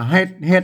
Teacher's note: มันก็เสียงเอกนะครับมันบ่ใช่ได้เสียงจัตวา